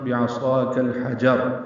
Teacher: کریں گے، صاد پر الف مدہ ہے، 2 حرکات لمبا ہے، کاف باریک ہے اور اس کو لام سے ملانا ہے، اظہار قمری ہے، ہا وسط حلق سے ادا کرنا ہے